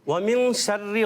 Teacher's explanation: تو یہاں اخفاء کریں گے یعنی غنہ کریں گے